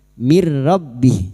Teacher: masuk pada huruf ra tanpa mendengung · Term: idgham bila guna